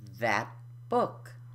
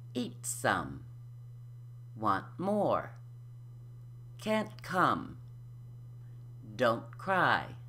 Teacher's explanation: No air is released, it's unaspirated. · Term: unaspirated T